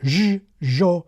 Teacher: even here in Mendoza, sibilant friction, more like a ʒ, ʒo, can be heard creeping in. And here in Cordoba the ʒ type sound predominates.